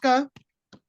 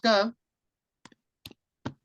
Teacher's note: su caracterización fonológica Será que es una consonante oclusiva sorda velar